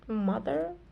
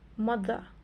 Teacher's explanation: In Jamaican patois, or also in the standard Jamaican English, they tend to stress the words at the end of the word.